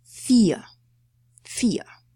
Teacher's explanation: The diphthong ie combined together produces just long letter e, or sound e.